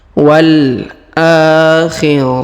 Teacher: huruf tanwin UN bertemu wau bertasdid maka tanwin unnya menghilang melebur ke huruf wau